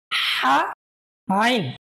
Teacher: আইন এবং হা, এই দুটি হরফ গলার মাঝখান থেকে চাপ দিয়ে তারপরে বলতে হবে